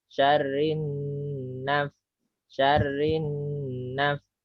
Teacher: Jadi wa min sya itu guna, syarri roknya double. Rinna itu dengung agak lama.